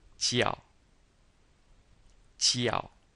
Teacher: And this is a fourth tone, so we say it quickly and falling.